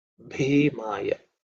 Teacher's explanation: Bhi is the only aspirated sound.